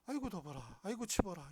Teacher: 사실은 이 순경음 비읍은 아직도 경상도 사투리에 남아 있어요. 아이고 더 봐라, 아이고 치봐라 이렇게 될 때 더 봐라 할 때 버가 이 순경음 비읍이에요.